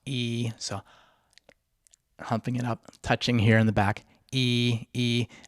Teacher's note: Number 4, now quickly reopen your mouth to start the inhale with the tip of the tongue lightly behind your bottom front teeth and your mid-tongue humped up to the top back molars on an E vowel. So E, so humping it up, touching here in the back, E, E, and you can do an E vowel, go E to get a feel for it, and then inhale without vibrating your vocal cords or changing your mouth shape or tongue position.